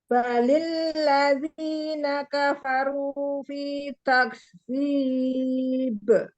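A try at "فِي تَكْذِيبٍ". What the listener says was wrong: Diulang kafnya harus lebih tegas dulu. Tak dulu baru keluar udara.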